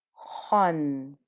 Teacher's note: Kha with two fathas is khan. So you can hear still the thickness, the heaviness carries on into the vowel as well.